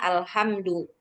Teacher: Jadi H-nya itu kurang masuk ke tengah tenggorokan.